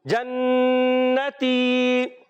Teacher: نون مشدد ہے پیارے بچوں, کیا ہوتا ہے ہمیشہ ایک الف کا غنہ ہوتا ہے, ایک الف کا غنہ ادا کریں گے اور آخر میں یا مدہ کو باقی رکھتے ہوئے ادا کریں گے